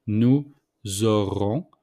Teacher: we make the liaison between nous and auront with the S. So the S became mostly the Z.